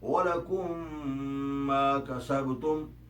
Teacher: اب اسی طرح الادغام صغیر یہ ہے کہ اگر میم ساکن کے بعد کوئی حرکت والا میم آ جائے تو پہلا میم نہیں بولا جاتا اور دوسرے میم کی آواز میم مشدد کی آتی ہے